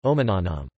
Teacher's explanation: On the other hand, omenanam as our apple has a light third syllable na and a heavy fourth syllable nam, so secondary stress falls on the fourth syllable